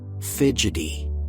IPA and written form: ˈfɪdʒ.ɪ.ti (Fidgety)